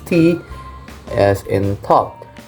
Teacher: So the tongue tips make contact with the alveolar ridge, blocking the airflow, and upon release, a burst of air is produced.